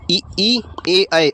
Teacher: जीव के आधार पर हम स्वरों के उच्चारण स्थान की बात करेंगे तो जो अग्र स्वर हैं हमारे ई, ए, ऐ